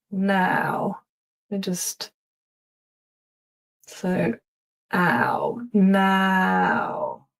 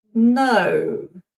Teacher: the mouth kind of wide as now. And then we've got no mouth is narrower.